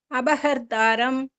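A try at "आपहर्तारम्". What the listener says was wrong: It's not ba, it is pa. Apahartaram. Apa. Pa. Apa. Apa. Apa. Pa. Pa. You say pa. Pa. Apa.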